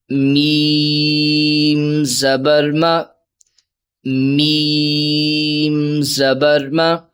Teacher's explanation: حروف شفوی ہے، ہونٹوں سے ادا ہوگا